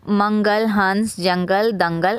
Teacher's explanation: अनुस्वार का उच्चारण नाक से किया जाता है।